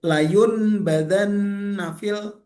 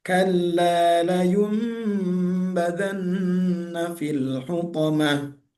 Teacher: Jadi bukan layun badan nafil, bukan. Tapi dirubah menjadi layum badan dan dibacanya panjang, didengungkan. Kalla layum badan nafil hutamah. · Iqlab ini adalah iqlab itu mengubah bunyi nun, membalikkan bunyi nun sukun menjadi huruf mim. Bunyinya seperti mim. Oke, hurufnya cuma satu, huruf ba.